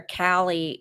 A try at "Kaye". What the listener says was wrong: Kaye. Kaye, you don't pronounce the L.